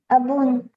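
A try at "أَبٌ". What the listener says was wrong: Abun, you are reading it a Bun, huh? You are putting an abun. You are not reading it same like aba, huh? Or abu. Because of double pesh or double dhamma or dhammatan, you are putting a an in the end. Abun.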